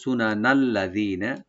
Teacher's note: লামটাকে open করে জি একালে টানবেন, নুনে কোনো টান নাই